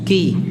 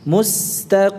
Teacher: Kemudian tebalnya qaf, qi ya. Jadi tidak tipis ya seperti kaf. Tebal. Mustaqim.